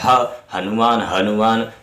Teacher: तो ये यहाँ पर देखिए आप सा, तो घर्षण पैदा हो रहा है, रगड़ रहा है, ह हनुमान हनुमान, तो गले से भारीपन रगड़ा हुआ निकल रहा है, तो ये क्या हो गया आपका ऊष्म व्यंजन हो गया।